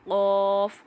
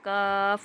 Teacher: اگر نرم حصے سے ہے تو قوف، سخت حصے سے ہے تو کاف ادا ہو رہا ہے